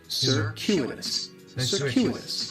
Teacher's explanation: The stress is going to be on that second syllable, and that CU it's kind of like you're saying the letter Q.